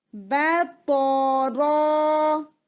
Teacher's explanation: را پلس الف دونوں ہیوی ہو جائیں گے. با تو را، با بالکل لائٹ، با تو را.